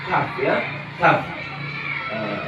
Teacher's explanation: Itu ada huruf qaf ya, ada huruf qaf. Kemudian ada di pangkal lidah agak maju ya, agak maju bertemu dengan langit-langit, itu ada huruf kaf.